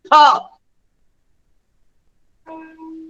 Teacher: ફ બે હોઠ ભેગા કરીને બોલાય છે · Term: ગુજરાતીનો ફ